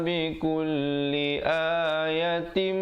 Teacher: tanwin bertemu mim, idgham bi gunnah, dengungkan 2 harakat.